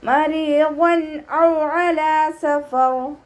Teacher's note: മരിവൻ ഔ അലാ സഫർ, വാവ് ഉച്ചരിക്കുന്ന സമയത്ത് ചുണ്ടുകളെ സർക്കിൾ ചെയ്ത് പിടിക്കുക. അയനിൻ്റെ സൗണ്ടിനെ തൊണ്ടയുടെ മധ്യഭാഗത്ത് നിന്ന് തന്നെ കൊണ്ടുവരാൻ ശ്രദ്ധിക്കുക